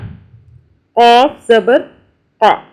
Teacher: یہ قاف جو ہے یہ موٹا ہے، حلق سے پڑھتے ہیں۔